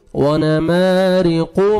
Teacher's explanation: कॉफ को मोटा करके पढ़ेंगे